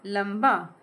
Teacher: जब ल के साथ अनुस्वार लगा तो यहां म प्रोनाउंस हुआ।